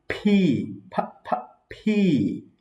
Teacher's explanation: দুই ঠোঁট মিলিয়ে বাতাস বের হবে উচ্চারণ করার সময়।